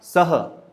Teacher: स था और उसमें विसर्ग लगी हुई थी, जिसका उच्चारण आधे ह के समान करना है